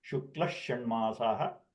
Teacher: when combined, it becomes Shukla Shanmasaha as double Sha